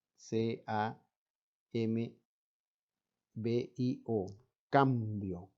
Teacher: en este caso la M se junta completamente los labios